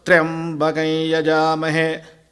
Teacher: that's got an upper swara in the very first syllable